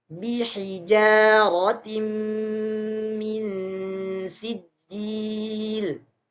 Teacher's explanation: yang berharakat tanwin bertemu dengan huruf mim cara bacanya sama yaitu memasukkan suara tanwinnya kepada huruf mim